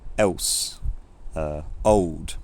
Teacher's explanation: He also exhibits an accent feature called L vocalization which is where the the L phone if it occurs at the end of a syllable becomes basically a vowel